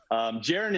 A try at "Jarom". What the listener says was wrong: Jarom with an M, by the way. Jaron. I'm not Jaron.